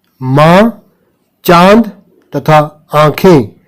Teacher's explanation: अनुनासिक स्वरों के उच्चारण में मुंह से अधिक तथा नाक से बहुत कम सांस निकलती है।